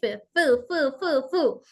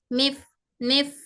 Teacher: दोनों दांत नीचे की होंठ की तरी को टच होना तो हमारा हर्फ सही है